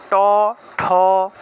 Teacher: এই ট ঠ উচ্চারণ করলে দেখবেন জিউভাটা উল্টে যাচ্ছে